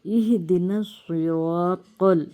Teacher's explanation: ہمیشہ سے جو ہے سواد کی آواز موٹی آئے گی۔ نس ذرا ہمارا منہ گول ہوگا، ہونٹ بھی گول ہوں گے۔